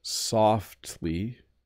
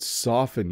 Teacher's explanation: because softly, you do hear the T a little bit, but soften you don't.